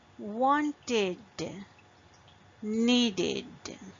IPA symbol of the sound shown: id